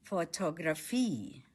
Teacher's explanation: Stress is on the last syllable.